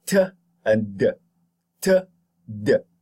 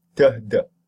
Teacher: We call, because they occur, or they are made by the tongue tip pressing against the alveolar ridge. They are called alveolar stops.